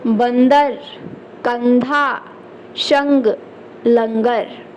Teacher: अनुस्वार का उच्चारण करते समय हवा कहां से निकलती है केवल नाक से निकलती है केवल नाक से यह ध्यान देना है आपको यह मोस्ट है